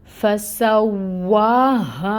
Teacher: تو ہا کو اقصا الحلق سے تو نکالنا ہے ہمیں، لیکن اس کو ایک الف کے برابر کھینچنا بھی ہے. ٹھیک ہے، اس کی مقدار ہوگی 2 کاؤنٹس.